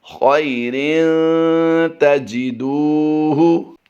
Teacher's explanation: اور تاجدو دال واو پیش دو میں ہم نے لمبا کر کے پڑھنا ہے، واو مدہ کا قاعدہ ہوتا ہے۔